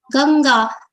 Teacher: pronounced as Nga only, which is the nasal consonant of the ka-varga of consonants